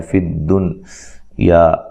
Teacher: یہ نون ساکن کا اظہار ہے، اظہار مطلق اس کو کہا جاتا ہے